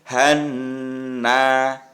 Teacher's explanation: Jadi yang han itu namanya mendengung dan agak panjang membacanya.